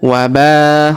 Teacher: Huruf ba kita panjangkan. empat atau lima harakat karena di depan huruf ba terdapat alif yang di atasnya terdapat tanda garis bacaan panjang empat atau lima harakat yang ini ya.